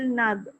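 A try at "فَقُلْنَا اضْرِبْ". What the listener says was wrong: kuat bunyi nad. D tu menyebabkan lidah tu turun. Lidah tu jangan turun. Kalau turun confirm. Jadi kalau ada bunyi je d, salah lah tu.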